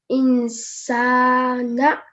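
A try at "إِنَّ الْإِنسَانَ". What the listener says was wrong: You did prolong the sa for a bit. I would like it if you could prolong it for a little bit longer because there is an alif, so we could distinguish it from a normal stroke.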